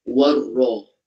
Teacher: Warra dan ra dibaca tafkhim. Tafkhim dibaca tebal kerana ra tu baris atas ya